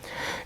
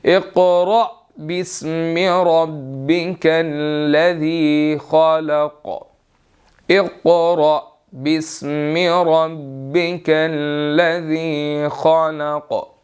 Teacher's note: یہاں قاف بھی موٹا ہے، را بھی موٹا ہے، اور حمزہ آگے ساکن ہے، تو اس کو ہم نے جھٹکا دے کر پڑھنا ہے۔ اقرأ بسم ربک الذی خلق نہیں پڑھیں گے، بلکہ اقرأ بسم ربک الذی خلق، اقرأ بسم ربک الذی خلق۔